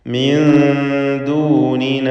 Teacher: സാക്കിനത്തായ നൂനിനെ ഇഖ്ഫ ഹഖീഖി നൽകി അവ്യക്തമാക്കി മണിക്കുക, മറച്ച് മണിച്ചുച്ചരിക്കുക.